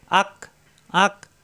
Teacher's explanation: হামজা যাবর আ মিলবে কাফের সাথে, আক, আ কণ্ঠনালীর শুরু থেকে, আ, আর কাফ জিব্বার গোড়া থেকে একটু আগে বাড়িয়ে, আক, আক, কয়ের মতো হবে, আক।